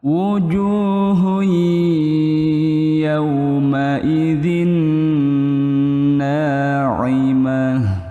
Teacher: Itu hukumnya idgham bighunah. Karena ada domahtain bertemu dengan ya itu hukumnya idgham bighunah dengan dengung.